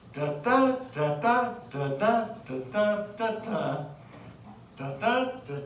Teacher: That's iambic. Weak syllable followed by a strong syllable, and that pattern repeats itself 5 times per line.